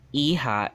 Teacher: the H doesn't get pronounced in chavacano